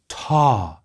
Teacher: 2 special tones, a falling breathy ta, sink, and a low glottalized ta